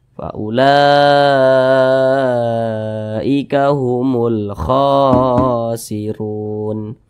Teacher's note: Ini huruf kha, di atasnya ada alif kecil yang berdiri di atas huruf kha, maka huruf kha dibaca panjang. Namanya mad tabi'i, panjangnya 2 harokat atau kira-kira 2 ketukan.